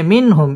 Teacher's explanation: ইজহার গুন্নাহ ছাড়া স্পষ্ট করে পড়তে হবে মিনহুম মিন সাকিন ইজহারে খাস গুন্নাহ ছাড়া স্পষ্ট করে পড়তে হবে